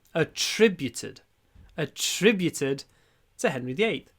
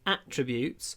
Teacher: This song is attributed to Henry VIII. So, stress on the second syllable